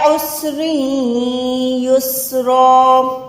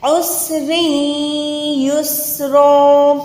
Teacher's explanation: را کو یا کے ساتھ ملا کے ادغام کریں گننے والا۔ جب بھی 2 زبر پہ رکیں گے تو یہ 1 زبر ہو کے الف کے ساتھ ادا ہوگی یا کھڑی زبر ہو جائے گی۔